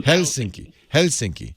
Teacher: you're supposed to emphasize the first syllable